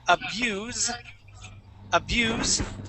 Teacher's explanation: a word that ends with an s but does not sound like an S it sounds more like a z